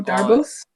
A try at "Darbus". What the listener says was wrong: No, you don't pronounce the S. Darbo. Darbo?